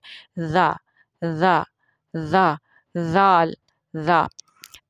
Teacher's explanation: ज़ुबान की जो नोक है वो ऊपर वाले सामने वाले जो दांत हैं उनकी नोक से लगती है, तो ये लफ्ज़ अदा होता है।